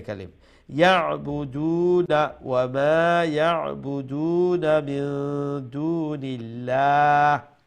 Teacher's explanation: ওইখানে ওয়াও আছে না ওয়াও মাদ্দা এই দালের তার আগে যে দালের উপরে যে পেশ আছে সেই পেশ যেটা অরিজিনালি খাটো ছিল ওইটাকে লম্বা করে দিবে